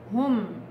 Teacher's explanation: ارجع إلى الساكن في الميم واطبق الشفايف هم بس من غير ما تطولي الغنة، ليش؟ لأنه بعديها فاء، وقلنا احذري احذري إذا جاءت الفاء بعد الميم الساكنة، احذري إنك تعمليها إخفاء أو تطولي بالغنة.